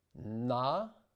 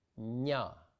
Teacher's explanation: In the case of the N, the difference between the hard and soft is produced by the shape and position of the tongue relative to the hard palate. The tongue is hard and more pointed for the hard N, engaging the tip against the teeth, while for the soft N, it is softer and flatter against the hard palate.